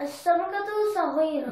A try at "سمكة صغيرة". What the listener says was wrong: There's no as. سمكة.